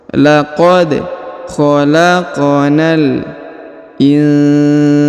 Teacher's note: Huruf nun sukun bertemu huruf sa, maka didengungkan dan disamarkan.